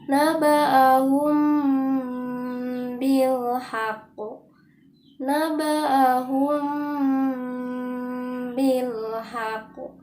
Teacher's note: Nah, untuk ikhfa syafawi ini berlaku apabila huruf mim bertemu dengan huruf ba yang berbaris dalam 2 kalimat. Cara membacanya yaitu wajib menyembunyikan mim sukun di antara bunyi huruf ba.